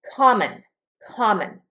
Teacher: The accent is on the first syllable here.